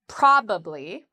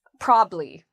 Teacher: You can say with 3 syllables, probably, or you can say it in conversation with 2 syllables